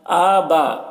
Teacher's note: حمزہ میں کھڑا زبر ہے، ایک الف کے برابر کھینچ کر پڑھیں گے